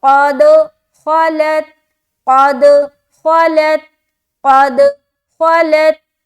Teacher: خا کو بھی موٹا نکالنا ہے کیونکہ خا حروف مستعلیہ میں سے ایک ہے جو موٹے پڑھے جاتے ہیں اور قاف بھی.